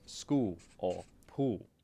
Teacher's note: In South Australia, they might drop the L entirely and sound more like school or pool.